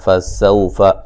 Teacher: سین کو باریک سیٹی سے ادا کریں گے